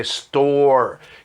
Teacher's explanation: Esse O, com a língua enrolada para trás, fazendo essa boca cheia.